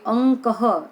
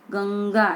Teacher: જે અનુસ્વારની પાછળ ક ખ ગ ઘ વર્ણ આવે તો અનુસ્વારના સ્થાનમાં અંગ થાય છે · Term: અનુનાસિક વર્ણ